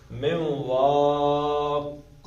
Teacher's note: من نون کے بعد واو آ گیا ہے تو نون کے اندر کیا کرنا ہے؟ نون کو ہونٹ گول کر دینے ہیں. من واق، گو کہ دو زیریں ہیں لیکن عارضی طور پہ یہ ساکن ہو جائے گا.